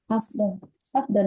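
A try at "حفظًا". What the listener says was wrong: Harokatnya yang yang kurang. Bukan hafzon, tapi hifzon. Hifzon. hifzon. hifzan jayidan.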